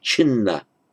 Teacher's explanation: So what happens is the chidna, the d and the na merge by sandhi, so the word actually is chinna